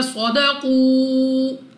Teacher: صاد مستعلیہ میں سے ہے، موٹا پڑھیں گے